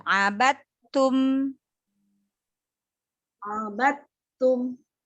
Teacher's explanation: mim di akhir berikan sifat bainiyah, mengalir sedikit. Mim sukun dan nin sukun, ya, berikan sifat bainiyah.